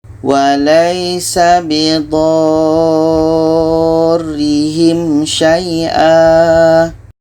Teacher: Ini mat lazim kilmi mutsaqqal. Dha ini kita panjangkan 6 harakat baru masuk ke huruf yang ada tasydid. Kita baca walaysa bidarrihim syai'a.